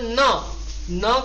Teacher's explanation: न का उच्चारण दंत से भी होता है और नासिका से भी होता है